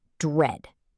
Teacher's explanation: It starts with a DR blend. It's not de-read, it's one syllable.